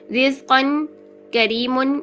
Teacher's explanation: تو پہلا رول ہے کہ را کے نیچے اگر اٹ سیلف کسرہ آ جائے تو ہمیں کچھ اور دیکھنے کی ضرورت باقی نہیں رہتی۔ را کے نیچے کسرہ آ گئی تو اس کا مطلب ہے را کو ہم باریک پڑھیں گے